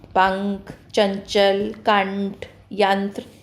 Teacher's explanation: अनुस्वार का उच्चारण करते समय मुख से कम व नाक से अधिक आवाज़ आती है